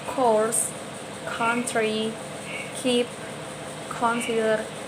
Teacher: Ini disebutnya sebagai voiceless velar stop.